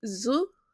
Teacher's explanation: the vocal cords come together and they produce the vibration